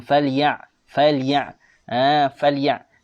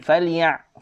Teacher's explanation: Jangan baca huruf ain dengan Hamzah.